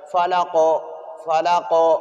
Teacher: آخر میں یہ جھٹکا سا ادا ہوتا ہے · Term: قلقلہ